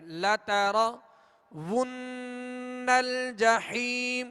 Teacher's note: یہاں ہم نے غنہ کیا، نون مشدد ہے، اس کے اوپر تشدید ہے